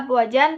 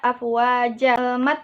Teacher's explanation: iwad Apabila ada fathatain pada huruf Akhir kata yang diwakafkan atau disebut Mad pengganti tanwin sehingga tanwin tidak berbunyi lagi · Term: Mad iwad